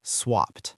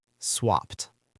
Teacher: Even though it ends in an ed, we pronounce it with a T sound at the end.